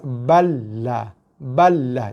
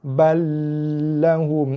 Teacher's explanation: tu dah seolah-olah macam kita nak mendengungkan bacaan lam tu. Lam tak ada dengung. Cuma tekan dan lepas.